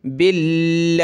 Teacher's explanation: یہاں لفظ اللہ سے پہلے با پر زیر ہے تو لفظ اللہ کو پتلا کریں گے